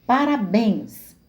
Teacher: Parabéns é uma palavra oxítona, tem acento na última sílaba